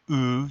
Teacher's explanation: if you say ooh you pucker your lips up a little bit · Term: rounded vowel